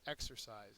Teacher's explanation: exercise is a verb first syllable is accented